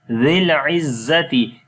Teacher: The first zal you will read softly, and the second za we read hard.